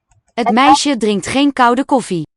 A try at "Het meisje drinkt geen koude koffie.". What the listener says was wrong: Koud, not the L vocalization.